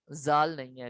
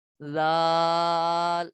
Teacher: زبان کا سیرا اور اوپر کے دانتوں کے اندرونی کنارے سے ادا ہوتا ہے